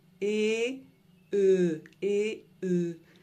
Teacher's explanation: la langue ne bouge pas, c'est les lèvres qui bougent.